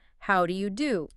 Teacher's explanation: repeat the phrase right back with the same kind of polite, maybe slightly rising tone, how do you do?